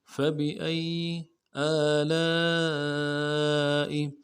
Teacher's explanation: حمزہ کے اوپر کھڑا زبر ہے، ایک الف مدار میں کھینچیں گے · کریں گے، با کو نون سے ادا کریں گے، حمزہ کو یا کے ساتھ ملانا ہے، یا کے اوپر تشدید زور دیں گے ، اگلے یا کو نون سے ادا کریں گے۔ فبأي آلاء